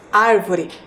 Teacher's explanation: Ao realizar a pronúncia da palavra árvore, podemos perceber que a sílaba mais forte é a antepenúltima.